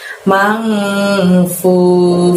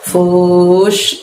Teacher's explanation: Fu-nya panjangnya 2, lalu bertemu shin sukun karena wakof itu fush, tiup angin kencang seperti itu ya.